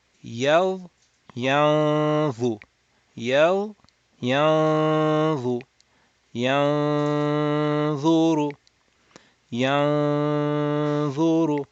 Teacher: We are going to go from ya to dha, then do 2 harakat of nasal sound, then you will do the dha with the dhamma and ra with the dhamma.